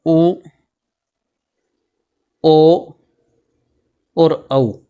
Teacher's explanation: इनका उच्चारण करते समय जिह्वा का जो पश्च भाग है वो अधिक सक्रिय होता है। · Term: पश्च स्वर